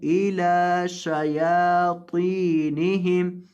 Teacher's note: لام کو لمبا کریں گے، اس کے اوپر کھڑی زبر ہے